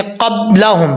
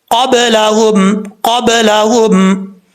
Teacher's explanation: दोनों होंठों को मिला के बंद नहीं करना, ये गलत हो जाएगा, कलकला नहीं होगा